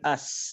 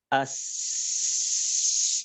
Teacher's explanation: kalau suaranya mengalir maka huruf sin ini akan terus ada suaranya sampai kita berhenti. As ya.